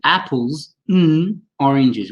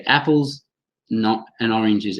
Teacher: some sounds disappear, the D has gone, the D sound, sorry, and the and becomes a schwa